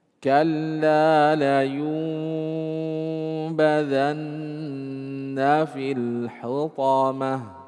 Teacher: Rubah dulu nun sukunnya atau tanwin jadi mim, kemudian gunnah dengungkan, kemudian samar-samarkan. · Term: hukum iklab